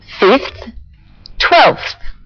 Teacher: The ones with a v sound, 5 and 12, change their v sounds to th sounds.